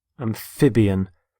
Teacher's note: Notice the stress on the middle syllable, amphib.